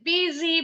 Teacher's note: bunyi s-nya Z disambung